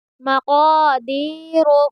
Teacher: قا، مقا، دال یا زیر دی، مقادی، را پیش رو، مقادیر، قاف کو پر پڑھیں گے کیونکہ حروف مستعلیہ کے حرفوں میں سے آیا ہے قاف